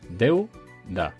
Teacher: Tengo una vocal abierta, que es la E, y una vocal cerrada, que es la U. Deu-da, 2 sílabas. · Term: diptongo